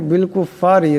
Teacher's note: রা নিচে জের, রাকে পাতলা আওয়াজে পড়তে হবে।